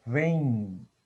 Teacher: Eu tenho a vogal E e o fonema M é pronunciado como I nasal, vem. Então, aqui eu tenho um ditongo nasal decrescente.